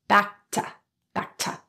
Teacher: The K or K in back is unreleased as it transitions to the next stop consonant T in to. This means there's not released between the two sounds.